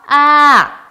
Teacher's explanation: 이렇게 올라갔다가 내려가는 음이죠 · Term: 이성